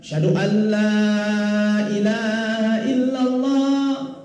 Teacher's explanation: Iya idgham, tapi bila gunnah. Idghamnya tidak bisa didengungkan karena ketemu nun mati dan lam. Tidak berlaku dengungannya, tidak bisa.